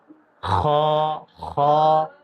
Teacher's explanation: خا کو ادا کریں گے پور کر کے، اسی طرح غین کو ادا کریں گے. خا کا مخرج جو ہے حلق کا منہ کی طرف والا حصہ یعنی اوپر کی طرف والا حصہ